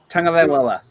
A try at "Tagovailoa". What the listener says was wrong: You just messed up the second syllable. You got this.